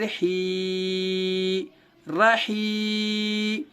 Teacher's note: یا ساکن سے پہلے ہا کے نیچے زیر آنے کی وجہ سے یا مدہ ہوگا، یا مدہ کو تھوڑا کھینچے اور معروف پڑھیں